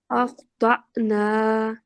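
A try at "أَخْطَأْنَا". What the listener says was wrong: یہاں آپ نے اچھا تو مخفم پڑھا ہے لیکن یہاں لگا تھوڑا سا کمزور ہے. دوبارہ سے پڑھیں.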